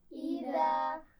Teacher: इज़ा में दाल को नरमी से पढ़ा जाना है, इसका ख्याल रखिए, सीटी की आवाज़ नहीं आनी चाहिए। इज़ा नहीं पढ़ेंगे, इज़ा, ठीक है।